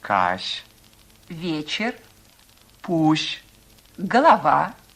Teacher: звук щ мягкий щелевой согласный произносится как очень мягкие ше